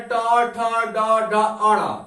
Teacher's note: दांत के पास वाला जहां जीभ टकराता है ऊपर छत पे, उसको क्या कहते हैं, मूर्धा कहते हैं